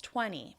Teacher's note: And that's because I'm American and we do what we call a flap T between those two syllables